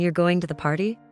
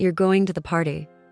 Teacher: If you say it with a rising intonation, like a question, you're going to the party, it means something different than if you say it with a falling intonation, like a statement, you're going to the party.